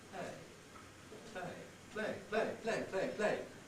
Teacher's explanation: usually the L Sound is voiceless